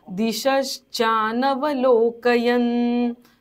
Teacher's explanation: शेवटचा न अर्धा बोलायचा आहे